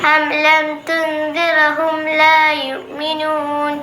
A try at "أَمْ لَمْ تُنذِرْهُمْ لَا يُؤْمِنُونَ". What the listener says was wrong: ഇവിടെ തുൻദിർഹും ആ ഉച്ചാരണം ക്ലിയർ ആയിട്ടുണ്ട്, ഉഷാറായിട്ടുണ്ട് കേട്ടോ.